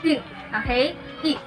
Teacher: Next we have also the I or the vowel I. It is a closed front vowel sound.